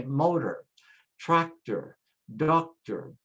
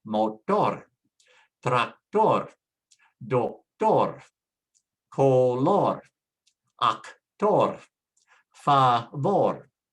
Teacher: in Spanish, because it ends with a consonant, we have to put the stress on the last syllable. So you say motor, tractor, doctor, color, actor, favor. · we put the accent or the stress on the first syllable of words that end in OR